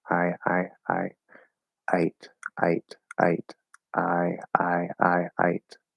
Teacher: it's more like a schwa going into like an e type sound